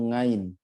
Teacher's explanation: Kayak orang Jawa itu kalau ngomong ain itu ngain